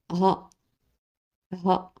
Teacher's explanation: Se prononce par une légère expiration, de la même façon comme en anglais.